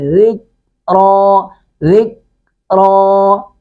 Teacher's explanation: کاف کو باریک پڑھیں گے اور کاف کی آواز کو لوٹنے نہیں دیں گے، اگر کاف کی آواز لوٹتی نہیں ہے، قوف کی آواز لوٹ کے آتی ہے، دو نقطے والا قوف۔